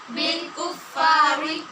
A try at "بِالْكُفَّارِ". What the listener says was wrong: ری نہیں پڑھنا، یہاں را باریک ہوگی، زیر والی را ہے۔ بالکفار